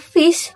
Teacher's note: Sedangkan bunyi pada kata fish dihasilkan ketika bibir bawah menyentuh gigi atas sehingga menghasilkan gesekan udara